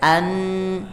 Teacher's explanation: Kalau an itu fokuskan ke hidung supaya tidak ada pantulan.